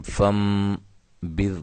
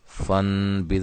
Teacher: نون کو میم سے بدل کر جو ہے غنے کے ساتھ پڑھنے کو اقلاب کہتے ہیں۔ پھر اس کا قاعدہ کیا تھا کہ نون ساکن یا تنوین کے بعد حرف با آ جائے تو وہاں نون کو میم سے بدل کر اقلاب کے ساتھ ہم پڑھیں گے، ٹھیک ہے۔